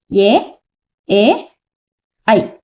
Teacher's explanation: కంఠతాళవ్యం అంటే కంఠము మరియు దవడలు అంటే మన కంఠము మరియు దవడల సహాయం రెండిటిని యూజ్ చేసి పలికేవన్నమాట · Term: కంఠ తాళవ్యాలు